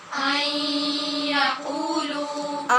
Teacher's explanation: لیحکما ليحكم لیحکما ليحكم بینہم بينهم بینہم بينهم بینہم بينهم ان یقولوا أن يقولوا جی نون پہ نون کو ہم نے یا میں مدغم کرنا ہے، ادغام غنے کے ساتھ ہونا ہے، اور قو اور لو دونوں کے بعد واو مدہ ہیں، لہٰذا ان کو لمبا کریں گے